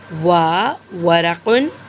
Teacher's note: और इसका मखरज होंठों का दरमियानी हिस्सा, यानी होंठों के दरमियानी हिस्से से मुंह को गोल करके, होंठों को गोल करके वा अदा आता है।